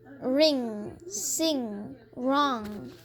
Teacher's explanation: Are you really hearing n, g at the end? Or just hear nga, one sound?